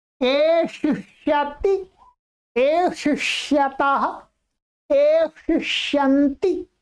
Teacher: इसमें 2 बार मूर्धन्य बोलना है आपको, ध्यान रखेंगे।